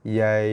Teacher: Yang panjang 4 harakatnya pada ya mati ni, pada ya lin. Yain. Cukup 4 harakat barulah kita sentuh pada makhraj nun.